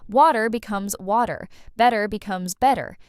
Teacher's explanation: That T just disappears into a soft D sound. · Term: flapping